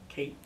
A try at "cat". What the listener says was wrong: You change the sound. Say the word. At. Isolate the sound. That's a short A sound. At.